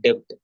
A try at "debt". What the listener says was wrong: DEBT, B is silent. You should pronounce it as debt. But normally we in South Tamil Nadu, we always say debt, so that to make that B also available. But it is only debt.